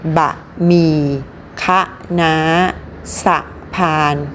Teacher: ออกเสียงอะเต็มเสียงที่พยางค์หน้า